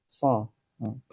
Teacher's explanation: Yang membedakan hanyalah sod itu tebal, sehingga suaranya menjadi so. So. Mungkin sebagian orang yang tidak terbiasa, mungkin dia akan membaca sa misalnya.